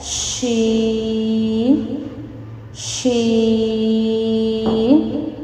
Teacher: زبان کا درمیان اور اس کا مقابل تالو کے ملاپ سے شین ادا ہوتا ہے